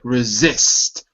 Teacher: The stress syllable is second.